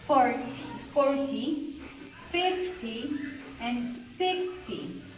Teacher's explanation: with the number ending of t y this stress is gonna be in the first syllable